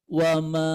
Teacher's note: Wama jadi tinggi dulu kemudian rendah ya.